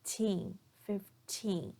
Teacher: notice here that I'm stressing the second syllable